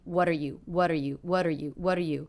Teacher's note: what are you very fast quite flat lower in volume · Also, the word you is unstressed, so it's going to be in that same line, what are you, what are you, what are you, what are you.